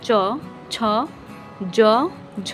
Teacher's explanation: জিহবার সম্মুখ এবং শক্ত তালুর সংস্পর্শে তালব্য ধ্বনি সমূহের উৎপত্তি। যেহবার অগ্রভাগ শক্ত তালুর সামনের দিকে স্পর্শ করলে অগ্রতালব্যে করলে মধ্যলব্য এবং পিছনের দিকে করলে পশ্চাৎ তালব্য ব্যঞ্জন ধ্বনির উৎপাদন হয়। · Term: তালব্য ব্যঞ্জনগুলো